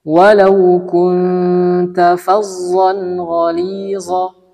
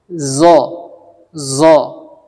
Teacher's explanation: mengucapkan huruf dha dengan makhraj huruf za, yaitu ujung lidah dengan gigi seri bawah. Namun dengan menggunakan vokal o. Jadi makhrajnya itu huruf za, hanya saja diberikan vokal o, zo. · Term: kesalahan yang paling sering